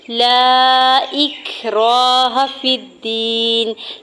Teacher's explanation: لا اکراہ فی الدین، لام کے اوپر سنگل زبر، ساتھ الف اٹیچ، اس کے اوپر مد منفصل ہے، 4 سے 5 حرکت کھینچ کے ادا کریں گے۔ حمزہ کی زیر کو کاف ساکن کے ساتھ ملاتے ہوئے ہمز کرنا ہے۔